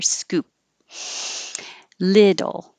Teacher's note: The vowel in the stressed syllable is I, as in hit.